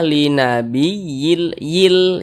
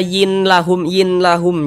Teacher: Yang dimasukkan itu apanya? Nah, ini bunyi tanwin ini dimasukkan ke huruf lam. Kita baca linabiyil yil. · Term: idgham bila gunnah